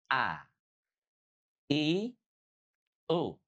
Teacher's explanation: Kalau hamzah dia dari pangkal tenggorokan, aqsal halqi. · Kalau huruf hamzah bunyinya ditekan karena punya sifat syiddah.